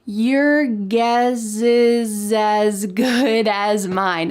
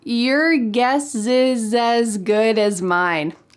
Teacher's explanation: We are linking together the S plus a vowel from the next word.